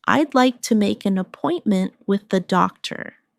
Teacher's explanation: Keep the stress on appointment so the listener understands the purpose.